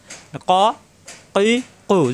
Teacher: কফ, জিব্বার গোড়া থেকে উচ্চারণ, কফ।